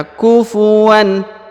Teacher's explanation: Huruf tanwin dibaca jelas ya, dibaca jelas karena tidak ada yang mempengaruhi ya.